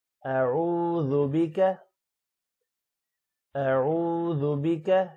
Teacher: واو کو تھوڑا سا لمبا کریں گے اور ذال ہے، زا نہیں پڑھنا۔